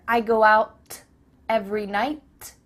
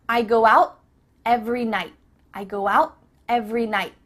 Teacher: your tongue is at the top of your mouth you're about to make the T sound but no air goes through so it's just stopped at the top of your mouth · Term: cut off the T